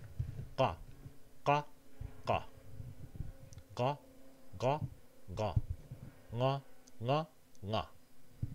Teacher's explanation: The back of the tongue is making contact with the uvular region. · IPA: qa qa qa ɢa ɢa ɢa ɴa ɴa ɴa